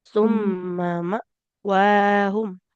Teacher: Mimnya jangan panjang ya, Bu ya.